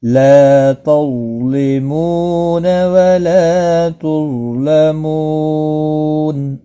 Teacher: وقف کی صورت میں نون ساکن پڑھا جائے گا، وقف بالاسکان ہوگا، مد العارض وقفی ہوگا، 3 سے 5 الف کے برابر کھینچ کر وقف کریں گے